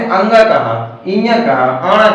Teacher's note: 5वें कॉलम को क्यों नासिक के व्यंजन कहते हैं, क्योंकि इन व्यंजनों को बोलने में हवा मुख के साथ साथ हमारे नाक से भी निकलती है। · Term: नासिक व्यंजन